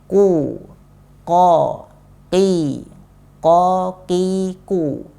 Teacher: melafadzkan huruf qaf dengan mensedikitkan angin yang keluar dari huruf ini. Artinya anginnya nggak terlalu banyak, ya, karena dia huruf qaf, dia huruf yang jahar.